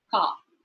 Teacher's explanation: in received pronunciation, the R is silent. So a word like C A R car is pronounced as car.